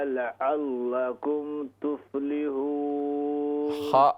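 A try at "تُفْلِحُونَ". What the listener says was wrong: हा को दुरुस्त कीजिए तुफ्लिहून कोशिश करें हा और आइन पर।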